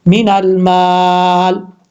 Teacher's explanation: मीन अल माल, ऐसे मद्दे आरिज वक्फी करेंगे तो फिर मीन अल माल इस तरीके से लंबा करके पढ़ सकते हैं। अब यहाँ पर लाम के जब वक्फ नहीं करेंगे तो फिर लाम के नीचे जो ज़ेर है वो पढ़ी जाएगी, लेकिन हम यहाँ पर वक्फ कर रहे हैं, आपको समझाने के लिए बात मैंने बताई है।